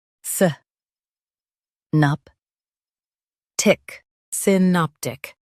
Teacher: Emphasize nop and soften tic.